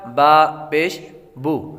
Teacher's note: پیش کو ہونٹوں کو گول کر کے ادا کرتے ہیں۔ جب آپ ہونٹوں کو گول کریں گے تو پیش ادا ہو جائے گا، کہ جس طرح با پیش بو۔